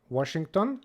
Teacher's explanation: when a Hungarian says Washington, they usually pronounce it with a V instead of a W.